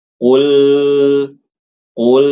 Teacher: Tapi dialirkan lamnya sedikit. Qul, qul, jangan ditahan.